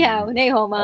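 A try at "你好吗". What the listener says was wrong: You got to you got to get the tone right, buddy. Ni hao.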